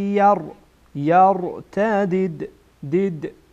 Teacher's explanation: اینجا دال از حروف قلقله هست ما قلقله می‌کنیم